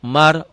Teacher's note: Mar, ro-nya tebel. Kenapa ro tebel? Karena sebelum ro mati baris atas.